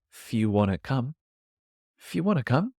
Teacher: The word if, because it's only 2 letters, it gets even shorter. We often lose the I sound and we keep the F and put it into the next word.